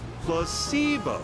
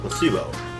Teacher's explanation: The stress is on the middle syllable.